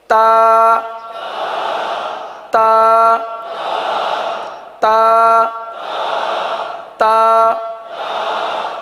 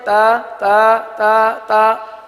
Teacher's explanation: تو تا کے اندر سختی ہے، شدت ہے. تو اس کو شدت کے ساتھ ادا کریں گے.